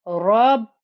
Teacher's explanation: The ba you must give time to show that there's two bas inside that shadda.